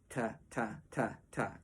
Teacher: Of course, you might tongue in different areas within your mouth for different kinds of effects, but your main boilerplate tonguing that you'll use is striking right where the roof of your mouth meets the back of your upper teeth.